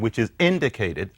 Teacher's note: notice what I just said which is indicated I didn't say which is indicated I said which is indicated I actually did the glottal stop